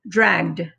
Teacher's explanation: when it's voiced it makes the d sound the e is still silent so it doesn't add another syllable we just say dragged okay this is the last one again